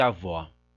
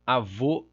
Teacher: uma distinção entre vogal aberta e vogal fechada, uma diferença entre médias abertas e médias fechadas, e, o.